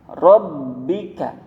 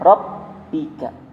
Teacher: ketika mau huruf ba tasydid itu, ba-nya harus tebal. Rabbika, bukan rabbika.